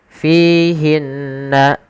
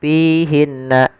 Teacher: kesalahan yang terjadi menggantinya dengan huruf p misalkan pihinna ini kesalahan yang sering terjadi dalam melafalkan huruf fa.